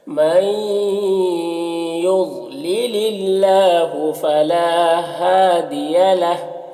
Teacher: ضاد حروف مستعلیہ میں سے پر پڑھیں گے۔ یہاں پر اللہ کے لام سے پہلے لام کے نیچے زیر ہے تو اللہ کے لام کو باریک پڑھیں گے، لام میں کھڑا زبر ہے، 1 الف کے برابر کھینچیں گے۔ · فلا میں الف مدہ ہے، 1 الف کے برابر کھینچیں گے · نون ساکن کے بعد یا ہے حروف یومن میں سے تو ادغام ناقص ہوگا، غنہ کے ساتھ پڑھیں گے